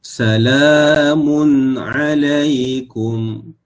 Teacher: Salamun, ya, pada huruf lam, ya, panjangkan 2 harakat.